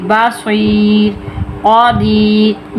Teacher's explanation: را ساکن اس سے پہلے یا ساکن، یہ صرف وقف کی صورت میں ہوتا ہے تو را ہمیشہ بریک پڑھی جائے گی